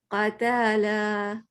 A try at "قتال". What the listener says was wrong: لمبا کر دیا. لام کو تا کو بھی لمبا.